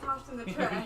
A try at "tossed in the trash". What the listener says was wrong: Cough? coughed in the trash or tossed in the trash? You got to enunciate. Does it sound like coughed in the trash?